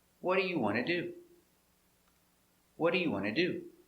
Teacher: The T is changed to a D between two vowels.